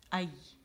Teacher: اچھا پھر یہ جو غیر مدیہ کا مطلب ہے کہ اس کے لیے زبان کا درمیانی حصہ شجر الفم کی طرف اٹھتا ہے لیکن شین کے مقابلے میں کم اٹھتا ہے، تو اس وجہ سے اس کا جو یا کی ادائیگی ہے وہ مد سے ڈفرینٹ ہے، ٹھیک ہے نا. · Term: یا غیر مدیہ